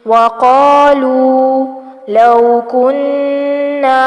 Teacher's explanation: نون پر غنہ کریں گے کیونکہ نون مشدد ہے اور مد اصلی بالالف ہوگی.